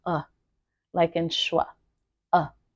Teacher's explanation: the schwa sound is the most common sound in the English language and it simply says uh like in schwa uh and it's kind of a little bit softer than a short vowel sound